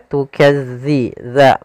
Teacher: Tukazzi za, makhrajnya agar sempurna kita lafalkan dari ujung lidah kita menempel dengan gigi dari atas